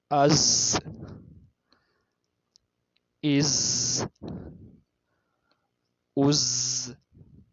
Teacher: ان کو ہم سیٹی والے حروف بھی کہتے ہیں کیونکہ جب ہم یہ ادا کرتے ہیں تو سیٹی کی آواز آتی ہے